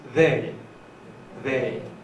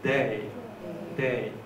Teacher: sound so next one they and they they and they okay the first one is a fricative and the second one is a plosive